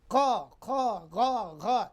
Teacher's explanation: क वर्ग को कंठ से बोलते हैं